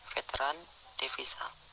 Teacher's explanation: Konsonan V, kriteria bunyi labiodental geseran bersuara, contoh kata veteran, devisa.